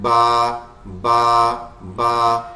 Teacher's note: ہونٹ ایک دوسرے پہ آ رہے ہیں. با, با, با, یہ آپس میں مل کے ادا ہوں گے